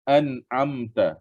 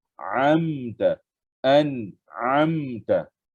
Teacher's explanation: A dengan ain disamakan. Dia baca dengan bunyi hamzah.